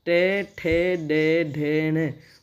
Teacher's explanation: इनका जब हम उच्चारण कर रहे हैं तो इस समय जिह्वा जो है मूर्धा को छू रही है, तो इसलिए इन्हें कहेंगे मूर्धा। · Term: मूर्धन्य